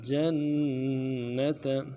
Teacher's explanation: जीम को नून के साथ मिलाना है, नून के ऊपर तशदीद जोर देंगे, ता को नरम से अदा करेंगे।